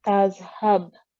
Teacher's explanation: you need to make a jerking sound on the letter ba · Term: kalkula rule